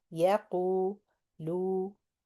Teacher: Ya is one count. Qu two counts. Yaqu, lu. Qu and lu same exact length.